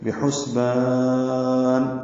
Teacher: والقمر بحسبان، با کو جلدی معروف طریقے سے ادا کریں گے، ہا کو بس تحلق سے ادا کرتے ہوئے سین سے ملا دیں گے، سین ساکن پہ ہمس ہے، با الف مدہ اور نون پہ وقف کرنا ہے تو مد عارض للسکون ہے